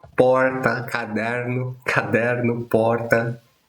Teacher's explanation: esse R de porta ou caderno é o chamado R retroflexo